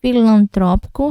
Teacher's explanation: o AN, filantrópico, saindo o sonzinho do nariz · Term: dígrafo vocálico